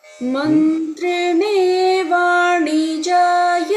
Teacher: Your na is in between na and na. So your na should be little more explicit as a sibilant, as a cerebral.